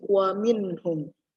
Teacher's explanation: izhar itu dibaca jelas, artinya N-nya dibaca jelas.